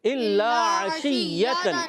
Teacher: شین میں تفشی بھی ہوتی ہے، منہ میں آواز پھیلتی ہے. عشیۃً، یا مشدد ہے، رک کر ادا کریں گے مگر یا کے اندر یا کی آواز پیدا نہیں.